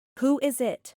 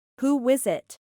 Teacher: Primero, pronunciada sin la intrusión del sonido de la W, y luego con la intrusión del sonido.